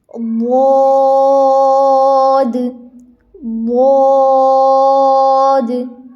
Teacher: حرف ضاد یا پھر ضاد، جو کہ زبان کی کروٹ سے ادا ہوتا ہے · ضاد، دال کے مخرج سے نہیں ادا کرنا، زبان کی نوک کو آگے نہیں لگانا، اپنی زبان کی کروٹ کو لگائیں اوپر والی داڑوں کے ساتھ